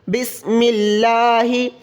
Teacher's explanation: یہاں پر ہم لفظ جلالہ اللہ تبارک و تعالیٰ کے نام کو باریک کر کے پڑھیں گے